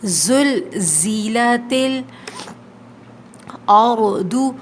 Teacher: را موٹا حرف ہے، ضاد موٹا حرف ہے، ہیوی لیٹرز ہیں، ان کو موٹا پڑھیں گے